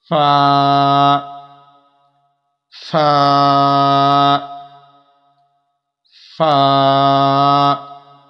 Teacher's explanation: فا اوپر کے دانتوں کے کنارے اور نیچے کے ہونٹ کی تری والے حصے سے یہ ادا ہوتا ہے۔